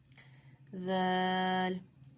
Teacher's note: ذال کا مخرج ہے زبان کی نوک اور ثنایا اولیہ کا سرا۔